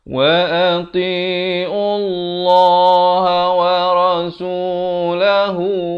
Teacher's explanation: Kemudian makhrajnya di pertengahan kerongkong. Lafz jalalah ini dibaca tebal kerana datang sebelumnya huruf ain yang berbaris dhammah dengan kadar panjang 2 harakat.